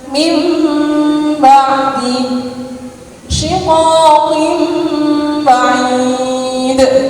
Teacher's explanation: Nun sukun diganti mim sukun lalu didengungkan. Nun sukunnya diganti mim sukun kemudian didengungkan. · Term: numid